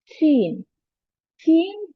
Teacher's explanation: sound comes when the middle of the tongue touches the plate